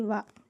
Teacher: దంతము, పెదవుల నుండి పుట్టిన వర్ణమును దంతోష్ట్యములందురు